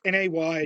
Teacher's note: there's a glottal stop in the middle of it.